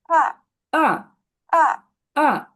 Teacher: এই টোনটা নিচে নামতেছে, ভয়েসটাকে নিচে যাবে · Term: ফলিং টোন